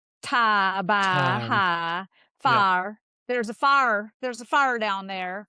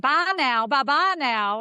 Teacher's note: I-monophthongization, which is something that's very prominent in Southern speech